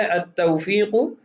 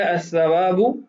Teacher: ان تمام کلمات کے اندر لام تعریف نہیں پڑھا جا رہا بلکہ لام تعریف کے بعد والا جو حرف ہے اس کو ادغام کی صورت میں پڑھا جا رہا ہے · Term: حروف شمسیہ